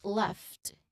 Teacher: a direct blend of the F sound flowing into the T sound at the end of the word gift. Both are invoiced. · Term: FT cluster